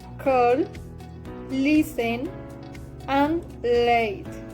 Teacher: The airflow passes the sides of the tongue. The place of articulation is alveolar. This phoneme sounds l.